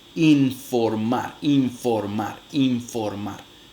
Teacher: La nasal alveolar se realiza nasal labiodental en el contexto en que le sucede una consonante labiodental.